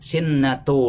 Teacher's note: Kadang-kadang yang tidak ada tasdidnya dia ucapkan seperti ada tasdid, seperti di kalimat la ta'khudhuhu sinatu, dia mengucapkannya sinnatu